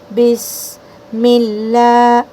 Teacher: با کو سین میں ملاتے وقت سیٹی کرنا ہے اور ہمس کرنا ہے، یعنی ہوا چھوڑنا ہے